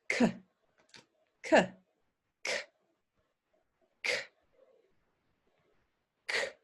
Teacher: I'm making that sound at the back of my tongue but there's nothing from my voice